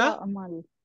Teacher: এবং নুনটা কিন্তু ড্রপ হবে, নুনটা থাকবে না